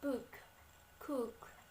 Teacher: the tongue position from short U is up and in the back of the mouth